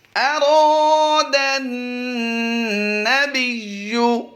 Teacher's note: दाल पर ज़बर है, तो यहाँ पर हमने दाल को डायरेक्ट नून से मिलाना है। मतलब ये कि अलिफ और लाम दरमियान में जो नज़र आ रहे हैं आपको, इनको हम साइलेंट कर देंगे और दाल को डायरेक्ट नून के साथ मिला देंगे। तो इस वजह से यहाँ पर दाल अलिफ ज़बर दा नज़र तो आ रहा है, यहाँ पर लंबा नहीं करेंगे, अलिफ मद्दा नहीं होगा।